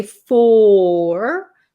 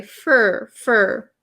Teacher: we don't usually say for we say fur fur notice how closed my mouth is